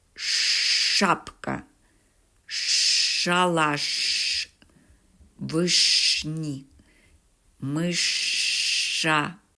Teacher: звук ш твердий приголосний і м'яким не буває ніколи